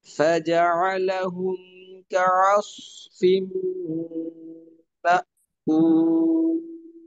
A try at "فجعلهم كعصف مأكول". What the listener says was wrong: মোটার উচ্চারণের সময় ঠোঁট বোধহয় গোল হয়ে যাচ্ছে কিনা এই বিষয়টা আর একটু আয়না দেখে তারপর শিওর হবেন। হ্যাঁ, ঠোঁট গোল করা যাবে না। হ্যাঁ, আরসালা ওয়া আরসালা তায়রান, এভাবে।